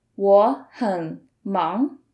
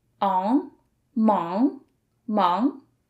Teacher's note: Notice the final of this pinyin 忙 has 3 letters, A and G. So with ng as the ending, you produce a nasal sound at the back of your nose